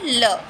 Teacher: जो हम लोग जीभ पर बल लगा कर कहते हैं उसको पार्श्वक कहते हैं, और ऐसा एक ही व्यंजन है ल, ठीक है।